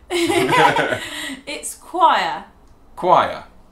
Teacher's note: you don't really pronounce the O and the I separately